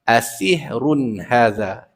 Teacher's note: Asihrun ditanwinkan, kemudian masuk haza tu kekalkan pada makhraj di pangkal khalqum gitu makhrajnya.